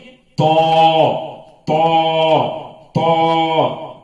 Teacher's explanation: زبان کو پھیلا کر اور دونوں جبڑوں کو لگا کر اور منہ گول کر کے ادا کرنا ہے تو. اور زبان نوک اوپر کے دانتوں کے کناروں کو لگتی ہے.